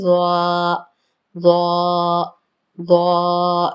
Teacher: ضا کو پڑھتے ہوئے پہلے تھوڑا سا ہونٹوں کا شیپ ہلکا سا راؤنڈ ہوتا ہے، ہلکا سا، بہت زیادہ نہیں، ورنہ ہو جائے گا ظالمین۔